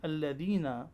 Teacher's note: For example, in alladhina, ya sakin is harful mad and it will be prolonged for 2 seconds. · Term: maddun asli